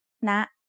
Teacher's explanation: High tone starts at a high pitch and rises very slightly.